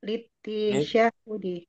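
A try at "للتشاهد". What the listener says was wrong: Bukan litisya dari madnya tasyahada.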